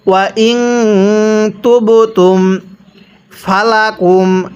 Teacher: এই নুন সাকিনটিকে গুন্নাহ করে পড়তে হয়।